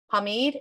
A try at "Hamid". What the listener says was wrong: Hamid, H is silent.